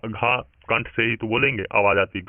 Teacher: कंठ से आवाज आती है आपकी घा का जब उच्चारण करते हैं।